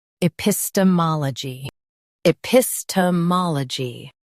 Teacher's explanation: I, pis, t, mal, gi, epistemology. Emphasize PIS and MAA in US, MOL in UK.